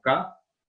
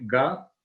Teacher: Esa diferencia entre sonoro y sordo, por ejemplo, tenemos letras como K, que es sorda, y su correspondiente Ga es sonora